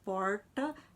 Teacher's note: o r no brasil pós vocálico estigmatizado quando nós realizamos a variante retroflex